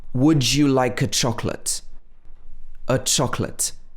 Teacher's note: you offer a chocolate to a friend so here you say would you like a chocolate a chocolate the a is pronounced uh